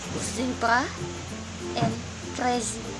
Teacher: Z diartikulasikan seperti S, kecuali bila ada getaran di pita suara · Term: alveolar fricative